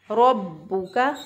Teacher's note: हम इसको पढ़ेंगे मा वद्दअका रब्बुका, रॉ को पुर पढ़ा क्योंकि रॉ के ऊपर ज़बर है, रॉ के ऊपर ज़बर हो तो रॉ को पुर पढ़ते हैं। बा को मजबूती और क़ुव्वत से अदा किया क्योंकि बा के ऊपर शद है